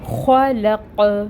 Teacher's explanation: قوف کو ساکن کریں گے تو یہاں پر قلقلہ بھی ہوگا کیونکہ قوف حروف قلقلہ میں سے ہے جب وہ ساکن ہو۔ خلق، قوف پہ آواز پلٹ رہی ہے، ٹھیک ہے۔ · خو کی خراش کو واضح کریں گے اور اس کو پر پڑھیں گے کیونکہ یہ حروف مستعلیہ میں سے ہے۔